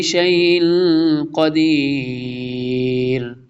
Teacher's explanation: اخفاء ہو رہا ہے، تنوین کے بعد قاف آ رہا ہے۔